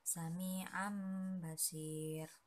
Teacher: apabila nun sukun atau tanwin bila bertemu dengan huruf hijaiyah seperti ba, maka cara membacanya seperti membaca mim